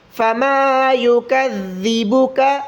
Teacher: ذال کو مخرج سے نکالیں، زبان کی تھوڑی نوک باہر نکالیں، اس کو یکذبک پڑھنا غلط ہے.